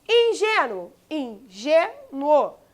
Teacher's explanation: Repare que aqui, ó, a penúltima sílaba é a mais forte. Significa que ingênuo é a paroxítona.